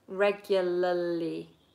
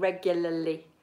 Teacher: You have to get the tongue flapping